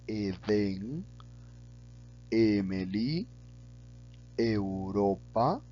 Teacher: la E también se pronuncia de manera abierta, pero un poco más cerrada que la A.